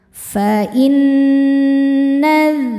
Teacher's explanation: Berikutnya ada hukum gunnah musyaddadah atau nun musyaddadah atau wajibul gunnah karena nunnya bertasydid. Cara bacanya didengungkan, tahan dengungannya kurang lebih 2 harokat.